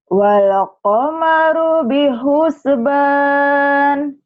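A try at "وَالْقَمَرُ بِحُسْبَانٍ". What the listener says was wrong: Ini berarti sama seperti Mbak Wanti juga nih. Kalau ada huruf mati suka ada nya. Wal qamaru bihus. Jangan, hati-hati. Wal qamaru bihusban. Jangan ada nya ya.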